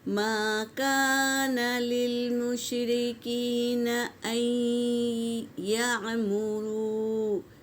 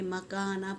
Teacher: میم بھی الف مدہ ہے اور کاف بھی الف مدہ ہے، تو ایک ایک الف کے مقدار کھینچ کر پڑھیں گے